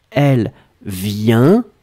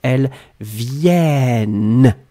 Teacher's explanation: And so clearly you can hear the difference between the singular form, elle vient, this is a nasal, it goes in your nose, the N is included in the sound